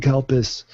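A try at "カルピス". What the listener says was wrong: I think it's your pronunciation. You must be saying Kalpis, and it's Karpis. I mean, Japanese are if you mispronounce something just a little bit, for some people, it's like completely different.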